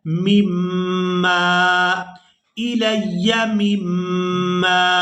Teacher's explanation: यह मीम को मीम मुशद्दद के साथ मिलाते हुए गुन्ना के साथ अदा करेंगे और दूसरी दफ़ा इस मीम को अपनी हरकत के साथ पढ़ते हुए अलिफ मद्दा की वजह से खींच कर अदा करना है।